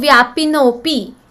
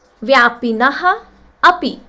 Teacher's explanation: Here, before Visarga there is a short a, Rasva a. After Visarga there is Rasva a. Visarga became O. And then there is Purva Rupa Sandhi, where this a disappeared and shown with this avagraha sign.